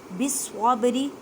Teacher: با کو ہلا کر پڑھیں کیونکہ یہاں پہ با ساکن ہے، کلکلہ کا قاعدہ کریں۔ · صاد مشدد ہے، مضبوطی سے پڑھیں، 2 مرتبہ پڑھیں۔